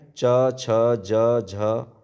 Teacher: तालव्य में च छ ज झ